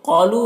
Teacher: قاف کو پر پڑھنا ہے، حروف مستعلیہ میں سے ہے اور یہاں پر الف مدہ ہے۔